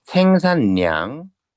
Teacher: 유음화가 일어나야 되는데 비음화가 일어나 버리죠.